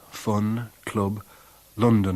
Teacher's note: popular northern accents share the important characteristics first of not distinguishing vowels of the lexical set strut from that of foot